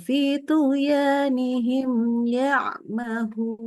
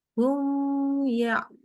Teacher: Sempurna biasa saja untuk mimnya, tetapi langsung masuk ke ya.